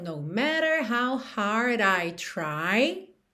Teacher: esses T's e D's que são reduzidos para rarara